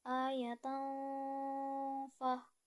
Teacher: tanwin bertemu dengan huruf Fa pada lafas ayatan Fah dibaca samar dan dengung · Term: Ikfa